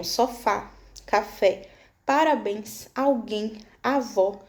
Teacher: Oxítona, última sílaba mais forte, terminadas em a, e, o, em e ens são acentuadas.